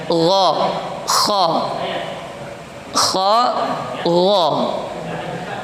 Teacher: Makhrajnya sama, yaitu di akar lidah, di tenggorokan